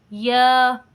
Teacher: یا کو پڑھنے میں ہماری زبان کا درمیان والا حصہ اوپر تالوں کی طرف اٹھتا ہے، لیکن تالوں کے ساتھ ٹچ نہیں ہوتا، اور اس کے اندر تو شین سے بھی زیادہ فرق آ جاتا ہے، شین سے بھی زیادہ فاصلہ آ جاتا ہے۔